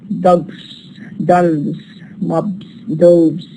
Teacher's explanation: All of these are voiced sounds, and that's why we produce the S plural as z. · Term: voicing rule